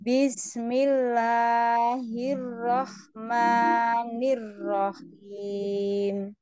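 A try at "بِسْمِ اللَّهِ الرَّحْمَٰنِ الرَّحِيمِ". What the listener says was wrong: Coba bismillahnya jangan terlalu panjang. Bismillah, jangan terlalu panjang. Bismillahi, langsung saja.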